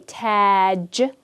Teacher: this alif is a long vowel. So you don't want to just say taj, but you want to make it longer and say taj.